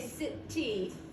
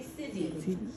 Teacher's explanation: The first sound is just like you sound T, and it's 10. But when a T is between two vowels, it's going to sound like a D. D. I don't say sit T, I say siddy. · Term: D sound